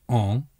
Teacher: much like the word on in English except that the tongue remains dormant and does not touch the roof of the mouth